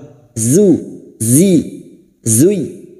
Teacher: huruf zain, tarful lisan sejajar gigi seri bawah, zuy. Dan huruf zain yang berharokat duma ini masuk pada huruf ya, hanya masuk tanpa ditahan lama-lama, tanpa mendengung.